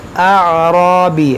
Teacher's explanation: یہاں پر آپ غور کریں، یہ حمزہ عین زبر آ، یہاں پر بعض لوگ غلطی کرتے ہیں آ پڑھتے ہیں، آرابی، آ نہیں ہے، آ، حمزہ عین زبر آ، اعرابی، یہ را پر زبر ہے تو اس کو ہم موٹا پڑھیں گے